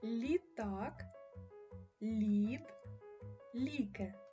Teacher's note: а звук ль пом'якшений приголосний позначаємо його схематично двома рисочками звуки л позначаються великою друкованою літерою